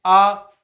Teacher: आ बोलने में तो मुंह फैल रहा है। ओठ तो गोल हो नहीं रहे हैं।